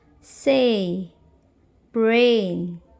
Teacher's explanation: E is longer in duration and I is shorter and unstressed. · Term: diphthong